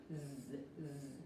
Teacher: Cómo pronunciar la Z, no es una S, no se coló, es muy parecida a la pronunciación de la S, pero no colocamos la punta de la lengua cerca de los dientes frontales, sino la parte delantera y se escucha una vibración, se siente una vibración